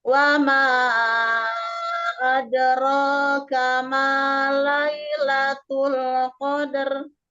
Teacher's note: Di wama panjangkan, di situ ada majaid mufasil, panjangnya sama 4 harokat. Kemudian di wakofnya disukunkan, jadi harus terdengar huruf ro-nya.